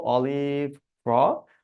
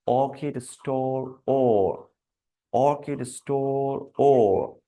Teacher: অলিভ থেকে অর্কিড সাউন্ডের রাউন্ডনেসটা বেশি হচ্ছে।